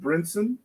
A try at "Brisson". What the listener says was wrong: There's no N in Brisson. You said Brinson. Is it Brinson or is it Brisson? No, you said Brinson.